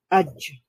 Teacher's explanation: জ সাউন্ডটা কলকলার কারণে আরেকটু রিফ্লেক্ট হয়